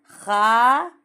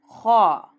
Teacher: मुंह को थोड़ा गोल करके अ की आवाज आना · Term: मोटा